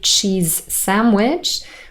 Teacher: we only say s from sandwich. The z in cheese is dropped. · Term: consonant to near consonant